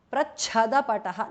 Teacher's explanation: Prachada pataha, the cha is mahapranah